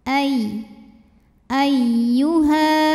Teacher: ada ya tasdid kita baca dengan nabr kita naikkan intonasinya jadi di sini tidak perlu ditahan kalau sebelumnya bukan tanwin atau